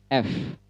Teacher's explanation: gigi atas bertemu dengan bibir bagian bawah dan tidak ada getaran di bibir bawah